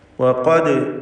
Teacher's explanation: വഖദ് ഇതിലുള്ള ഖാഫ് തഫ്ഖീം ചെയ്ത് തടിപ്പിച്ച് ഉച്ചരിക്കേണ്ട അക്ഷരമാണ്, ഇസ്തിഅലാഇൻ്റെ ഹർഫാണ്. ദാലിൻ്റെ സുക്കൂൻ ഖൽഖല സുഗ്റ നൽകി ശബ്ദം ഹറക്കത്ത് പോലെ ചലിപ്പിക്കേണ്ടതാണ്.